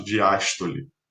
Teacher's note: E olha como a diástole é mais relaxada, porque a sílaba tônica é aberta, né? O fonema é aberto, a diástole.